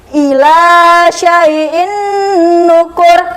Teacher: Dan cara bacanya dia dileburkan dan didengungkan. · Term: idgham bil huna